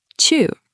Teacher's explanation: Chu means to go. It's a fourth tone, so it drops sharply. Chu, like a karate chop.